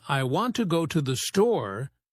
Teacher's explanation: in I want to go to the store, the main stress is on want and store